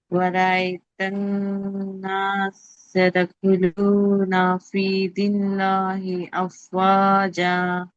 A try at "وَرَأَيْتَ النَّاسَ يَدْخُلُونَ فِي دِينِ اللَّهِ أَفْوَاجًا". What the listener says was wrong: నాసా తర్వాత ఎదుకులున చదివేటప్పుడు మీరు మెర్చ్ చేస్తున్నారు, జాయిన్ చేస్తున్నారు, చేయకుండా సీన్ మీద ఫథా క్లియర్గా చదవాలి. ఎదుకులునాలో యా క్లియర్గా చదవాలి. అలాగే దీనిల్లాహిలో కూడా చక్కగా చదవాలి.